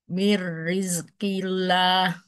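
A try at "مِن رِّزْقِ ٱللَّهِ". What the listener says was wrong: Coba kofnya lebih mundur lagi sedikit. Ya, roknya tipiskan.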